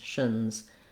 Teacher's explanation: And titians, again, here we have just basically no vowel for this A. We go right from the SH to the N sound, a syllabic N